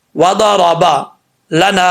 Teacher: را کے اوپر زبر را پر پڑھا جائے گا، وضربا لنا، نون کے آگے الف ہے، ایک الف کی مقدار، اس کو لمبا کریں گے۔